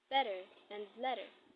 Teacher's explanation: the T sound is produced through a rapid movement of the tongue towards the roof of the mouth. It is not fully enunciated and almost perceived as D. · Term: flop